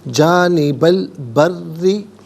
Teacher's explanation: بکم جانبہ البری، جانبہ میں با پر زبر ہے، اسے البری کے لام ساکن کے ساتھ ملائیں گے، درمیان میں سے الف یعنی حمزہ کو حذف کریں گے. بری میں را کے نیچے زیر ہے، را کو باریک کر کے پڑھا جائے گا، اور را مشدد ہے، اسے جماؤ کے ساتھ ادا کیا جائے گا